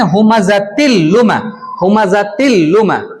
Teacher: بغیر غنہ کے ملا کر جلدی پڑھیں گے